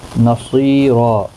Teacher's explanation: صاد حروف مستعلیہ ہے، پر پڑھا جائے گا، یا مدہ بھی ہے، ایک الف کی مقدار کے برابر کھینچ کر بھی پڑھیں گے، اور یہاں پر بھی آیت مکمل ہوتی ہے، تو یہاں پر دو زبر کو بدل کر ایک زبر کے ساتھ وقف کریں گے، تو الف مدہ بنے گا، ایک الف کی مقدار کے برابر کھینچ کر وقف کریں گے، اور پر بھی پڑھا جائے گا۔